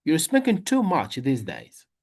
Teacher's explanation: Because this is a complaint, we give extra stress to too much.